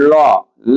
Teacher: हमारी जीवा एकदम मुड़ करके और दोनों बगल से सांस बाहर निकलती है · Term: पार्श्विक